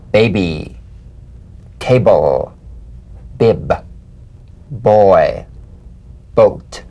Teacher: Play this on the springing away from contact, not by pressing the lips together. You'll feel a gentle voiced pulsation on the lips like a delicate, crisp tap. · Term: drumbeat staccato consonant